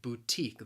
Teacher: it has two syllables the stress again is on that second syllable